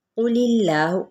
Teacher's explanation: قل اللہ، قوف پر ہے، اس میں جلالہ کا لام باریک پڑا جائے گا زیر کی وجہ سے